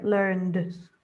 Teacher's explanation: Yeah. So just be careful with the d sound. Try not to duh, just d.